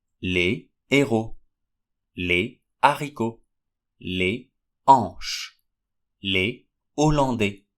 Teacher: Yet, in old time, some words had a pronounced H. Even if the H is not pronounced anymore, those words still refuse to use the liaison. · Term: aspirated H